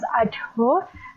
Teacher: when producing the morphemes ado becomes adho, and phoneme dh is aspirate.